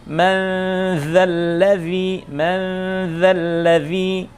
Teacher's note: Kemudian huruf dzal, man dza tipis dia karena ketemu huruf dzal.